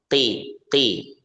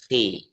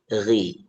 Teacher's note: ketika kondisinya kasroh maka dia pada kondisi yang lemah ya, walaupun tetap tebal dibandingkan huruf selain isti'la ya. Jadi ketika baca qaf kasroh qi, jadi tidak perlu qi, kha nggak perlu qi tapi khi, ghain nggak perlu ghui tapi ghi gitu.